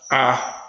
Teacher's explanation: Então eu tenho a vogal central baixa, A.